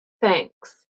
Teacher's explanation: Now between your teeth, no vibration.